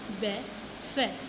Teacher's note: दंतुस्थ यानी दांत और होठ, यानी दांत और होठों से बोले जाते हैं